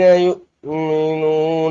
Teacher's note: یا حمزہ پیش یو، تھوڑا سا جھٹکا دیں گے، حمزہ ساکن ہے نا، اس کو تھوڑا سا جھٹکا دے کر پڑھیں گے